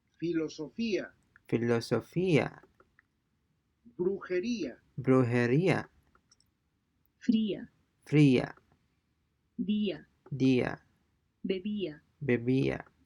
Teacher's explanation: the diphthong is broken and the two vowels are pronounced separately.